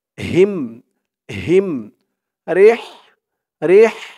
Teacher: র দিয়ে হা ধরবে, র হাজের রিহ, লাম জবর লা, রিহ লা, রিহ লা, ইলাফিহিম রিহ লা। এই হার উচ্চারণটা গলার ভিতর থেকে চিকুন হয়ে আসবে।